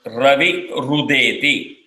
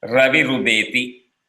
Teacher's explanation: Ganapatihi plus Avatu becomes Ganapati Ravatu. Ravihi plus Udeti, it becomes Ravi Rudeti. Ir plus U becomes Ru